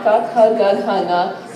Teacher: So the first line, ka, kha, ga, gha, nga, if you say them out loud, you'll realize that they're all coming from the same part of your mouth, from your throat